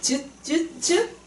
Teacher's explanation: 센 입천장이 혀 바닥이 붙는 즈. 근데 즈 소리를 내보면 막았다가 조금만 열어주는 즈 파찰.